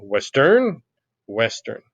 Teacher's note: Do you typically emphasize the West and then de-emphasize the earn? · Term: stressed, unstressed